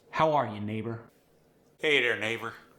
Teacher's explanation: The Pittsburgh accent has somewhat of a nasal resonance, particularly with your vowels, meaning the sound is coming from your nose as opposed to your throat or your chest. To get this nasal resonance, try keeping your tongue back.